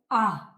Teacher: जब आ बोलोगे तो मुंह पूरा खुलता है। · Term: विवृत स्वर